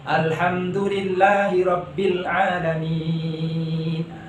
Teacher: Asalnya panjangnya satu alif, karena huruf yang terakhir disukunkan, maka itu dibaca panjang. Boleh dibaca 2 alif atau boleh 4 alif. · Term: mad arid lis-sukun